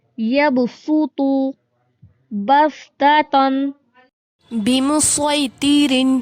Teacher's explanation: یہاں صاد کو سین کے تلفظ سے پڑھا جاتا ہے، یہاں پر صاد نہیں پڑھا جاتا، سین پڑھا جاتا ہے صاد کی جگہ